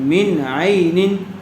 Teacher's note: تنوین کے بعد حروف حلقی میں سے حمزہ آیا ہوا ہے، اس لیے بغیر غنے کے جلد اظہار کر کے پڑھیں گے۔ من عین، من یہاں پر بھی اظہار کا قاعدہ ہوگا، اور عین یہاں پر بھی اظہار کا قاعدہ ہوگا۔